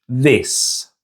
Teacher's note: See how we don't push any air through as we say the word this.